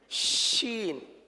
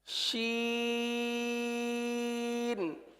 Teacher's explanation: کیونکہ اردو کے شین میں ساری آواز باہر نکل جاتی ہے، لیکن اس کے اندر منہ کے اندر بھی کچھ آواز رہتی ہے اور منہ کے اندر رہ کر پھر بعد پھیل کر پھر باہر نکلتی ہے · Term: قرآن پاک والا شین